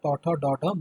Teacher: মূর্ধন্য বা মূর্ধা বর্ণ বা প্রতিবেষ্টিত বর্ণ বলা হয় প্রতিবেষ্টিত ধ্বনি বলা হয় এটার উচ্চারণ স্থান মূর্ধা